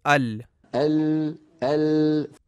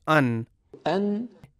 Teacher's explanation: زبان کا ابتدائی اوپر والا حصہ اپنے بالمقابل مسوڑوں کو جو لام کے مخرج سے تھوڑا سا نیچے ہے لگنا چاہیے اور ساتھ ناک سے بھی آواز گزرے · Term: نون کا مخرج